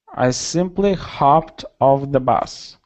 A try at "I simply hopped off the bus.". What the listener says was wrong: Good, just like that. Nice.